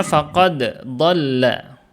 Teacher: Faqad dibacanya jelas faqad. Jadi dia qalqalah dulu, enggak dimasukkan ke huruf dhad setelahnya ya.